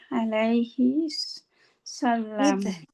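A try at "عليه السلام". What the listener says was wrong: আচ্ছা, আপনার সাল্লাম কেন বললেন? এটা কি সাল্লাম? আলাইহিস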